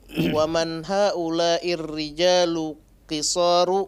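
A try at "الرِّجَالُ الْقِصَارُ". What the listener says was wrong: La. Rijalul. Waddih alif lam.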